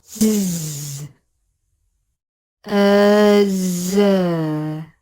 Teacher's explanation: When making the Z consonant, you should feel vibration in two places, in the throat and in the space between the tongue tip and the back of the front teeth. This is the vibration of the air as it is exiting the mouth. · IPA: /z/